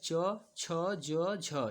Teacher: और च वर्ग का जो उच्चारण स्थान होता है वो तालव्य पे होता है।